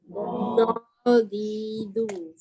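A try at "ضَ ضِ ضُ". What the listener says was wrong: Okey, huruf dot dia tak datang dekat depan. Dia bukan depan, sengit ke tepi pun bukan. Tepi lidah. Do, di, du.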